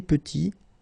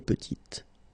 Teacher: Final T is not pronounced, and then when you add this E at the end, you get the sound T